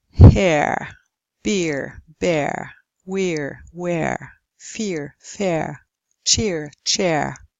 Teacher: these are especially relevant for speakers of British English because those would not pronounce the R after these there's usually an R in the spelling after these sounds here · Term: centering diphthongs